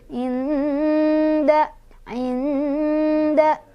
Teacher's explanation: Nah, karena dal itu dekat dengan huruf nun, makhorijul hurufnya atau tempat keluar hurufnya, maka ini dengungannya tuh lebih sedikit, tapi samar-samarnya lebih banyak. Jadi lebih samar, tapi dengungnya yang terasa ke hidungnya sedikit. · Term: ikhfa aqrab